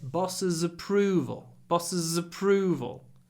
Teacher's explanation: In approval, the stress is on the second syllable, so there's no reason not to use connected speech.